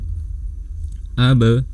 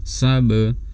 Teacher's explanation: ada ba sukun, kita qalqalahkan, kita pantulkan suaranya. Abe seperti itu.